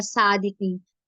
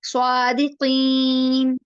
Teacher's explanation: سواد heavy letter ہے، اس میں تھوڑا سا آپ کا منہ جو ہے نا وہ تھوڑا سا گول ہوگا. سو سین کی طرح سا نہیں پڑھنا، صادقین نہیں، سو صادقین.